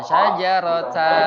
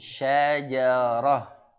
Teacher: bukan dibaca panjang, tapi berubah menjadi ha sukun syajarah. Ya, baik.